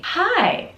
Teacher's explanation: But let's pay attention to the intonation. It goes up and down, and it sounds very friendly.